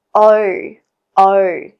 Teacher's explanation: The O diphthong is actually pronounced more in the back of the throat with flatter lips compared to American English.